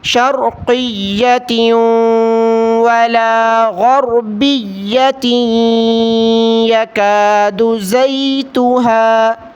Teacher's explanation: واو اور یا میں غنے کو نہ بھولیں، غنہ ہمیشہ کرنا ہے